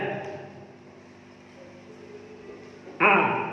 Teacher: Wa hamzah, dan pada huruf hamzah a biasa saja, nggak perlu tebal.